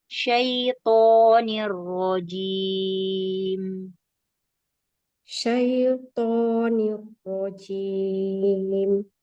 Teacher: Toknya Syaiton. ya toknya mau pangkal lidahnya mau naik ya. Huruf itbaq, huruf tebal.